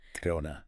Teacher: The rhythm pattern of English requires that this weak stress element be reduced. Going to becomes much shorter, almost blending together into gonna. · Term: weak forms